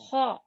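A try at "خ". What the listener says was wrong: Kurang serak suaranya. Kho.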